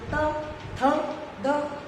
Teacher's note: जिसमें हमारी जीभ है वो दांतों के बीच में आ जाती है